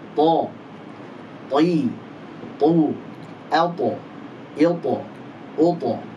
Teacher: ujung lidah ketemu pangkal gigi seri atas · huruf to tebal karena memiliki sifat isti'la dan itbaq, dan juga dia punya sifat qalqalah, dibaca memantul saat sukun